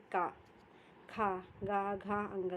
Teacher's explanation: 5 व्यंजन कंठ से बोले जाते हैं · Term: कंठ वर्ण